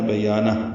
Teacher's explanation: نون کو ہا سے ملا دیں گے، ہا ساکن پہ ہمس ہو جائے گا، یہ وقفن ہے بیانہ، ملانا ہو تو بیانہ ہو الٹا پیش ہے، پھر وہ پڑھنا ہوگا، پھر سانس نہیں توڑ سکتے۔